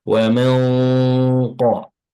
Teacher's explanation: Pada nun sukun itu kan bertemu dengan huruf tafkhim, huruf tebal, yaitu qaf ya. Teorinya adalah nun sukunnya juga ditafkhim, ditebalkan juga.